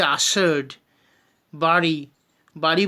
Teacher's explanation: জিভের অগ্রভাগে দাঁতের গোড়ায় তাড়িত হয়ে যায় বলে বা আঘাত পায় বলে এদেরকে বলছি তারণজাত